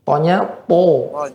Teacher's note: dia tebal isti'la dan itbaq, lebih kuat tebalnya